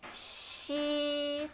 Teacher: Ele tem um pouco de chiado também, né? Como se fosse SHI ou CHI pronunciando em português